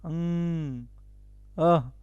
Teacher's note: कंठ से हो रहा है एक मिनट कंठ से इसका उच्चारण कंठ से इसका उच्चारण हो रहा है